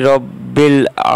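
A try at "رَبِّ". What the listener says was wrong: রব্বি টানা হবে না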